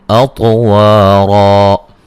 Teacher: ता को मोटा अदा करेंगे और क़लक़ला करेंगे